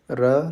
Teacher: र के उच्चारण में जीभ कांपती या लुढ़कती है। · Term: प्रकंपित या लुंठित वर्ण